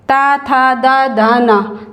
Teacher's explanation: ता बोलते हैं तो हमारी जीवा दांत के टच होती है। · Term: तवर्ग